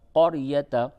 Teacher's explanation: قاف را زبر قر، یا زبر یا، تا زبر تا، قریتا۔ یہ را ساکن سے پہلے جب زبر ہو تو اس را کو پر کر کے پڑھتے ہیں